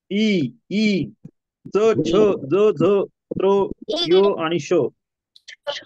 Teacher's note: म्हणायचं बघा इकडे लक्ष द्या माझ्याकडे तालव्य वर्ण म्हणजे काय तर जो जिभेचे पाते कठोर तालु लागून ज्या वर्णांचा उच्चार होतो त्यांना तालव्य वर्ण म्हणतात म्हणजे आपलं जे टोक आहे ना टोक आपण हे वर्ण उच्चारताना · आपल्या जिभेचे टोक आहे ना, टोक, आपण हे वर्ण उच्चारताना ते कुठं लागतं? टाळूला लागतं.